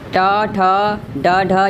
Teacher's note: ट, ठ, ड, ढ ये आपका मूर्धन्य है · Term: मूर्धन्य व्यंजन